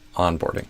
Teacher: I put the stress on the on instead of the board